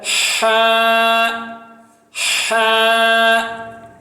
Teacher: ہا بالکل سینٹر، بالکل سینٹر، گلے کے سینٹر سے، جس کو ہم وسط حلق کہتے ہیں. تجوید کی زبان میں وسط حلق، حلق کا بیچ کا حصہ یعنی سینٹر، وہاں سے پڑھا جاتا ہے ہا ہا.